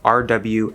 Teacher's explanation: going to go into the you're going to hold it there your lips are going to come around for the w and for just a quick moment you're going to be saying like rw at the same time